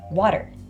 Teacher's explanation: The T turns into kind of like a D/rolled R sound to make it easier to pronounce.